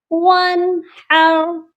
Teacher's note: یہاں پر ہا درمیان والے حلق سے ادا ہوگی، سینے والے حلق سے ادا نہیں ہوگی